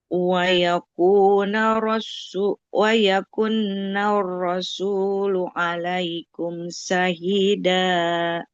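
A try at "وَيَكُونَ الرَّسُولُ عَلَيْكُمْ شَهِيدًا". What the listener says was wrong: Oke, nggak boleh wayakuna karena nunnya tidak bertasdid ya. Wayakunar rasulu alaikum syahida. Yang pertama itu untuk panjang pendeknya. Panjang pendek.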